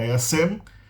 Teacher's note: você vê que tem esse J inicial, mas esse J não soa